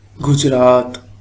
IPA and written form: gʊd͡ʒ.ɾɑːt̪ (Gujrat)